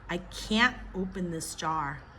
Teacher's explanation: you don't hear that T from me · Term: stop T